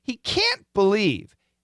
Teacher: make sure when we say can't, we stretch it out. Make it strong.